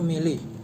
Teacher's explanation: Konsonan P diluluhkan menjadi nasal M, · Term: Peluluhan fonem